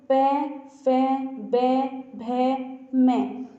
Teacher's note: जब आप इन वर्णों का उच्चारण करते हैं तो आपके दोनों होंठ आपस में मिलते हैं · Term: ओष्ठ्य व्यंजन